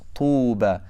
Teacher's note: If you say tuba, you're not really circling your lips, so you're not giving the dhamma its right.